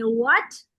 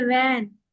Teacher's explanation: होठों को गोल करके डब्ल्यू बोलते हैं